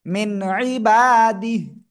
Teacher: নুন সাকিনের পরে ইজহারের অক্ষর আইন, স্পষ্ট করে পড়তে হবে